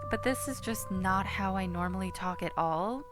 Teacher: I can take the rasp out of my voice and make it very clear in tone like this